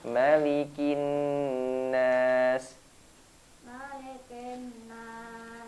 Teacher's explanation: huruf mimnya pendek ya. Jangan dipanjangkan.